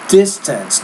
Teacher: so stress is on the first syllable not the second syllable